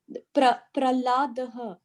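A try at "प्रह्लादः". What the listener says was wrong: It is Prakhladaha. Not Prahladaha. It is Prakhladaha. As it is Prahladaha or Prakhladaha. I said Prakhladaha.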